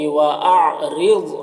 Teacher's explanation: ضاد کو پر پڑھیں گے حروف مستعلیہ میں سے